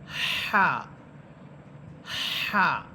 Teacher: এবং গোল হা এবং এই জিমের মতো হায়ের মধ্যে পার্থক্য হচ্ছে যে এই হাটা, অর্থাৎ জিমের মতো হা, বাতাস যে বের হবে বাতাসের একটা সাউন্ড হবে, শব্দ হবে, আপনাকে সাউন্ড করে পড়তে হবে হা হা।